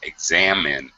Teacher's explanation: who examines you examine yeah examines you yeah it's min uh short eye sound examine second syllable stress